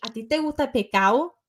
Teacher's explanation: They drop the S's and the D's.